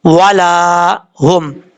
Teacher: یہاں الف سے پہلے زبر ہے اس لیے اس کو ایک الف کی مقدار لمبا کریں گے۔ والا ہم، یہ ہوگی الف مدہ کی مثال۔